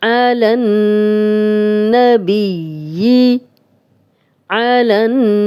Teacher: نون پہ شد ہے تو ہم نے غنہ کیا ہے